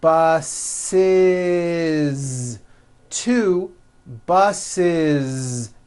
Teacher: the last sound you hear is that voiced zee